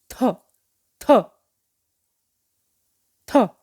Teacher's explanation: अब जब हम दोबारा से हमारी जो टंग है वो ऊपर वाले दांत को ऐसे टंग करके जोर से नीचे आती है, बहुत सारी हवा साथ मुख से बाहर निकलती है